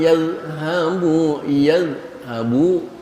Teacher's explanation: Mohon tidak mengqalqalahkan dza karena dza bukan huruf qalqalah. Huruf qalqalah itu da.